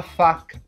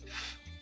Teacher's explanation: Os dentes superiores tocam levemente o lábio inferior.